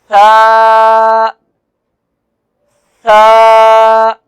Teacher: ثا کا حرف جو ہے زبان کی نوک سامنے والے جو دانت ہیں ان کی نوک والے آدھے حصے سے جب زبان کی نوک ٹکرائے گی تو نرمی سے ثا یہ ادا ہوگا۔